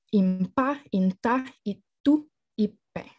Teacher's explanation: So Panãra exhibits word initial e epenthesis